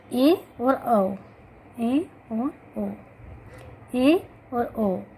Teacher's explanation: इनके उच्चारण में हमारा मुख द्वार आधा बंद होता है, इसलिए इसे अर्ध संवृत्त स्वर कहा गया है।